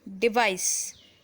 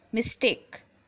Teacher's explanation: Device. See, it is producing voiceless S sound, though its spelling is DEVICE